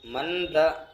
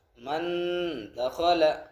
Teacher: نون کی آواز کو ناک میں چھپا کر پڑھیں گے